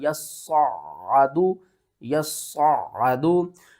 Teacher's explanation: یا کو صاد کے ساتھ ملائیں گے، صاد کو موٹا کر کے بھی پڑھیں گے، سختی کے ساتھ بھی پڑھیں گے